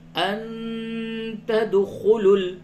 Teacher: نون ساکن کے بعد تا ہے، اس جگہ پہ اخفا کریں گے